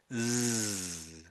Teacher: Um, Whereas with the Z, you actually the sound is actually or meant to be coming more from your throat. So something in your throat is sort of vibrating, making that zizzy sort of a sound